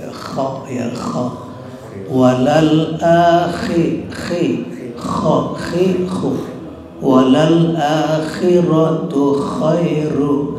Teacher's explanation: Nah itu sama, ngorok semua itu. Gak boleh kalau nggak ngorok. Nanti kalau nggak ngorok kan keliru dengan ha.